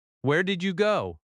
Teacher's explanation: Notice how your voice lifts slightly. That rising intonation signals a question in American English.